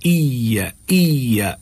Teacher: یا پر بھی تھوڑا زور دینا ہے، یا کا نہیں پڑھنا ہے، ایا، ٹھیک ہے، یا کے اوپر زور دینا ہے، یہاں پر بھی تشدید موجود ہے۔